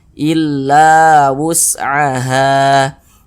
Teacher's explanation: sehingganya la dibaca panjang Mad Thobi'i panjangnya dua harakat